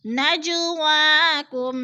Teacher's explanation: نجواکم، نجو پہ قلقلہ ہو رہا ہے، جیم ساکن ہے اور حروف قلقلہ میں سے ہے تو اس کو ہم نے ہلا کر پڑھنا ہے